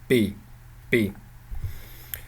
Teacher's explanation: Well, I vacillate between the two because the Mongolian p sound is halfway between a P, a P, and a B. This is a semi-voiced sound, so not an unvoiced stop and not a fully voiced stop, labial stop, but a semi-voiced. So this is a media.